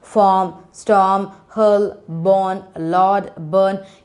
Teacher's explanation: You are not at all pronouncing the R.